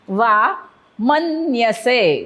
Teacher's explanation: जर त्या असतं तर काय केलं असतं आपण? वा मन्यसे म वरती आघात कारण पुढे जोडाक्षर.